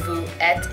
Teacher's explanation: between the s in vous and the e in être, you're gonna have a liaison